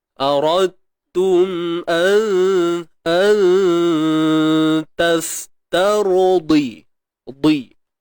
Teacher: Huruf dad baris bawah, kena tebal tuan-puan ya.